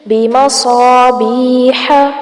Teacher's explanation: بیح بی پر مد اصلی ہو رہی ہے، اس کو تھوڑا سا کھینچیں گے